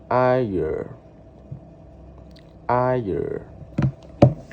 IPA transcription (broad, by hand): aɪə